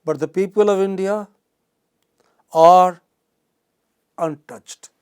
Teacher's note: So there is a pause after are, there is a pause after untouched.